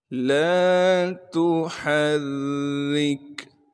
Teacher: تشدید ہونے کی وجہ سے تھوڑا سا ٹھہراؤ رکھیں گے۔ را کے نیچے زیر ہونے کی وجہ سے را کو باریک کر کے پڑھیں گے۔ را کو آگے کاف ساکن سے ملا دیں گے کیونکہ کاف ساکن ہے۔ · تا کو باریک کر کے بغیر کھینچے پڑھنا ہے۔ ہا کو صاف کر کے گلے سے نکالیں گے اور ہا کو آگے را سے ملا دیں گے کیونکہ را پر تشدید ہے۔ تشدید ہونے کی وجہ سے تھوڑا سا ٹھہراؤ رکھیں گے۔